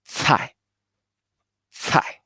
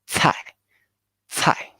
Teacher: like the TS, but with a lot of air pump out.